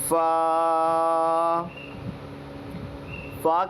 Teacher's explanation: फ ऊपर के दांतों के किनारे से और नीचे वाले होठ का जो गीला हिस्सा होता है वहां से निकलता है · فا کا سب سے پہلے مخرج سمجھتے ہوئے یہ دیکھنا چاہیے کہ فا اوپر کے دانتوں کے کنارے سے اور نیچے والے ہونٹ کا جو گیلا حصہ ہوتا ہے وہاں سے نکلتا ہے۔